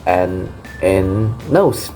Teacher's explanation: the tongue makes contact with the alveolar ridge, but instead of blocking the airflow completely, it allows air to flow through the nasal passage.